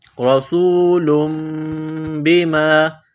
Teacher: لام کے اوپر 2 پیش تنوین ہے، تنوین کے بعد با ہے، تنوین کے بعد جب با آ جائے تو وہاں غنہ کریں گے، آواز ناک میں چھپائیں گے. اس ناک میں آواز چھپانے کو اقلاب کہتے ہیں.